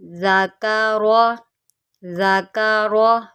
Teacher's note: ذال کو نرمی سے پڑھیے گا، اس کو آپ نے سیٹی کے ساتھ نہیں پڑھنا، اس کو نرمی کے ساتھ پڑھتے ہیں.